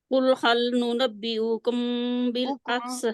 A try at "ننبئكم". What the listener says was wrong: حکم بالکل بھی نہیں کھینچنا حمزہ کو